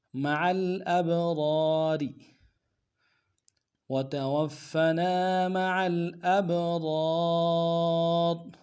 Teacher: گے، را کے ساتھ الف مدہ ایک اعتدال میں کھینچیں گے، اگلے را کو باریک ادا کریں گے، لیکن وقف صورت میں موٹا ادا کریں گے · اب را کو موٹا ادا کریں گے، را کے ساتھ الف مدہ ایک اعتدال میں کھینچیں گے